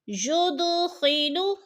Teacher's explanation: ید کی دال ساکن ہے اور حروف قلقلہ میں سے ہے تو ادھر ہم نے قلقلہ کرنا ہے، یعنی لفظ کو ہلا کر پڑھنا ہے